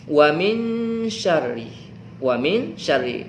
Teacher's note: nun mati bertemu dengan huruf Sya ingat dengung atau samar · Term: Ikhfa